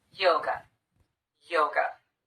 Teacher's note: or the uh sound same thing happens with the word yoga the second syllable is unstressed we replace the letter A with the unstressed vowel the uh sound